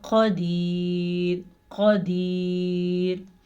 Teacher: اس را کو ہم باریک پڑھیں گے کیونکہ وقف کی وجہ سے را ساکن ہو گئی